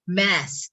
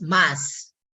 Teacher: in the American English they pronounce this one as mask AE sound just like the word black